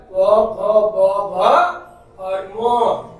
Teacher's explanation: ये सभी वर्ण का उच्चारण स्थान ओष्ठ है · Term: ओष्ठ वर्ण